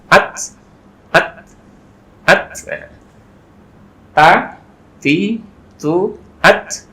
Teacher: Maka ada hamesnya, tapi hamesnya itu keluarnya dari pas nempel di gusi atau pangkal gigi seri atas